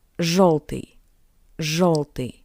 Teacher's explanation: Please note that after zh, yo sounds closer to the sound of o